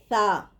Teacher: ثا زبان کی نوک اوپر کے سامنے والے 2 دانتوں کی جڑ کے ساتھ لگانے سے نکلتا ہے